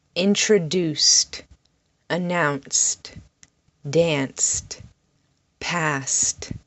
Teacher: The sound at the end of these words is st, st.